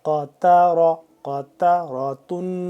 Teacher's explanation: دیکھیں پہلے قاف ہے، اس کو موٹا پڑھنا ہے ہم نے، پھر تا ہے، یہ باریک ہوتا ہے، یہ پھر را، پھر موٹا، قاتارا، قاتاراتن، وقف کے ساتھ قاتارا۔